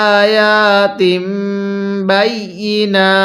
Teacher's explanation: এই যে হামজায়ের মধ্যেও এক আলিফ টান, ইয়ায়ের মধ্যেও এক আলিফ টান, তাহলে আয়াতিম। মিম সাকিনের পরে বা থাকলে সেই মিমের মধ্যে গুনাহ করতে হবে।